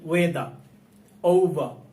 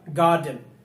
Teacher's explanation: এই শব্দের মধ্যে আর এর পরে ভাওয়াল সাউন্ড রয়েছে, এই জন্য আর এর উচ্চারণ হয়েছে প্র্যাকটিস। কিন্তু আর এর পরে যদি কনসোনেন্ট সাউন্ড থাকে তাহলে আর এর উচ্চারণ করে না।